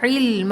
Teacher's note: علم، العین حلق سے ادا ہوگا